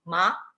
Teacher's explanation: Ma en tono segundo, ascendiente, significaría lino